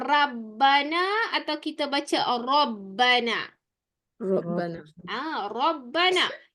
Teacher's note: Jadi apabila raw dibariskan dengan baris atas mesti menggunakan vokal O. Tak boleh pakai ra. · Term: tebal